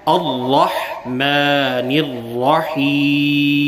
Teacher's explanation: الرحمن میں را ہے جو کہ پر پڑھا جائے گا